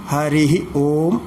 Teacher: ഹരിഹി എന്നുള്ളതിന് വിസർഗം സഹിതം ഉച്ചരിക്കണമെന്നാണ്. ഹരിഹി ഓം, ഇത് നിയമമനുസരിച്ചാണ്, എന്നാലേ അത് മന്ത്രം ശരിയാവുള്ളൂ.